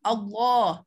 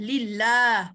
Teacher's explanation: Cuma sebutan saja kalau baris atas kita sebut tebal ya. Kalau baris bawah kita sebut nipis.